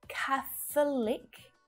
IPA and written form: 'kæ θ(ə) lik (catholic)